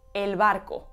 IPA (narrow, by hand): el.ˈβ̞ar.ko